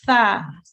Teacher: the tip of the tongue slightly comes out of the mouth and softly touches the upper teeth so you know the top part your teeth your top teeth